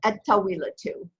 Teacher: ta is a sun letter, so we don't say el tawila too, it's et tawila too